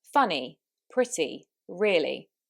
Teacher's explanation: Now we're going to look at how the vowels and consonants change with a Manchester accent. So in most of southern England, the Y on the end of words is said as an E.